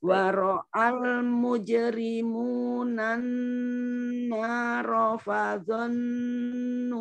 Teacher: Untuk ini tasdid di nun ditahan dulu, didengungkan dulu.